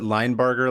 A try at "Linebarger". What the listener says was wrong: If it's German, I don't think it's J. It's like the G sound.